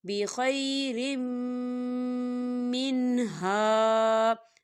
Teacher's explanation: رم را کے نیچے تنوین ہے اور تنوین کے بعد جو ہے میم آ رہا ہے، یہ حروف یرملون میں سے ہے تو یہاں ادغام ہوگا. ہم تنوین کو جو ہے میم کے اندر مدغم کریں گے اور یہاں تھوڑا سا غنہ ہوگا